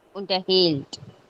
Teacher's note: Wenn das nicht trennbar ist, liegt die Betonung auf der zweiten Silbe.